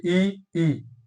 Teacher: ये जो ई और ई जो है ये तालव्य है, ये तालु से बोले जाते हैं